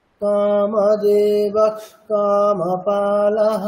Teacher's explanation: আপনারা একটু খেয়াল করে যদি দেখেন, এই যখন এই সন্ধি করে উচ্চারণটি করবেন, অর্থাৎ কামদেবঃ এই বিসর্গটিকে যখন খকারের মতো উচ্চারণ করতে যাবেন এবং পরবর্তী ককারটাকে সঙ্গে নিয়েই উচ্চারণ করবেন, আপনি কোনোভাবেই কিন্তু একটা পূর্ণ খকার উচ্চারণ করতে পারবেন না। যদি আপনাকে আলাদা করে বলা হয় তখন পারবেন, কামদেবঃ তখন করা যাবে, কিন্তু যখন একসাথে বলা হবে না, তখন এই মানে পুরোপুরি খকারটা কিন্তু আসবে না, তখন অটোমেটিক্যালি সেটা অর্ধেক খকারের মতোই হবে।